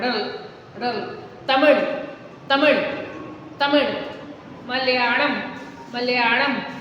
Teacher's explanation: न इसका उच्चारण पूरा ल है और न ही ड़ है। इन दोनों के योग से जो उच्चारण हो रहा है वो इस विशिष्ट व्यंजन का उच्चारण आपको करना है, ड़ल, ड़ल, तमिल, तमिल, तमिल, मलयालम, मलयालम।